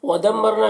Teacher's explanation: میم مشدد غنہ ہوگا اور را ہے ساکنہ سے پہلے میم کے اوپر زبر ہے، را کو پر پڑھیں گے